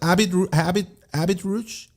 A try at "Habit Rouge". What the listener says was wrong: You pronounce the T at the end. It's not right. It's Habit Rouge. Yeah. Exactly.